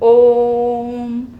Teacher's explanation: आपने देखा ही ओम के उच्चारण में तिगुना समय लगता है · लंबा उच्चारित करते हैं, मतलब लघु स्वर की अपेक्षा इसके उच्चारण में तिगुना समय लग रहा है, दीर्घ स्वर से भी ज़्यादा समय लग रहा है ओम बोल रहे तो। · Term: प्लुत स्वर